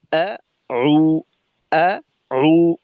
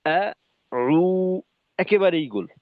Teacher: ঠোঁটের পরিবর্তনটা খুব দ্রুততার সাথে খোলা থাকবে, গোল হয়ে যাবে। আ উ, একেবারেই গোল।